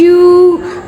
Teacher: یو کو stretch کریں گے واو مدہ کی وجہ سے. کیسے بچانا، واو ساکن اور واو ساکن سے پہلے پیش، ٹھیک ہے، پیش ہے.